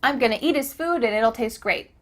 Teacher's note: the final t is changing to a d